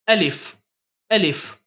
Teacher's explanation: अलीिफ अलीिफ इस तरह से जल्दी पढ़ना है ना कि अलीफ खींच कर पढ़ना है